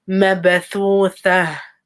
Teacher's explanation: ba with a sukoon, so give it qalqala.